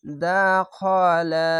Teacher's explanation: দাখালা, খ যাবার খ, খা বলবেন না, এটা মোটা অক্ষর, মোটা অক্ষর, তার জন্য খা হবে না, খ হবে